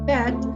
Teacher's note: the word bed the height of the tongue is in the middle of mid and low